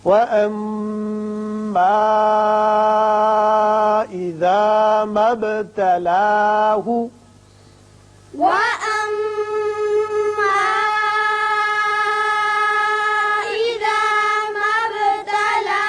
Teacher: پھر با ساکن ہے، اس کی صفت قلقلہ ادا کریں